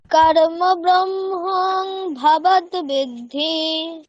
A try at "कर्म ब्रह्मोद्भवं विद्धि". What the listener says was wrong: আচ্ছা ভবত নেই ভবম, হ্যাঁ অনুসার আছে। আরেকবার শোনো, कर्म ब्रह्मोद्भवं विद्धि